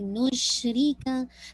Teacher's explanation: जितना आप टाइम शीन को दे रहे हैं एज कम्पेरेटिवली नून रा और काफ को नहीं दे रहे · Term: रखावा